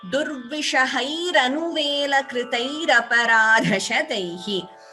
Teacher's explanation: So instead of the visarga here a visarga is followed by a. So it will get replaced by ra. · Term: visarga refa sandhi